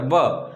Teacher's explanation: દાંત અને હોઠ આ બંને જગ્યાએ ભેગું બોલવાના કારણે દંત્યોષ્ઠ આવો શબ્દ બને